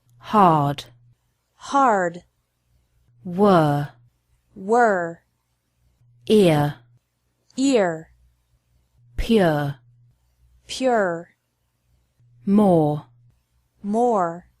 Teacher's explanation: The sound of the letter R is also a little bit different. The R is pronounced stronger in American English.